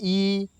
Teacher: हमको अग्र भाग से क्या बोलना है ई बोलना है तो आगे की तरफ बोलते